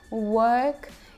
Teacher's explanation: а Австралия и Британия это вот это вот благородное O, work, и не произносят звук R